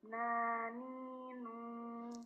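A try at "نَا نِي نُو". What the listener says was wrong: Enggak ke hidung Mbak. Belum bukain. Naninu. Bukan naninu. Masuk ke hidung.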